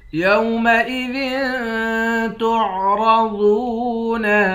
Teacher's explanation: یومئذ تعرضون، ذال کے نیچے 2 زیر ہیں، یہاں اخفا کریں گے، را اور ضاد دونوں کو موٹا پڑھیں گے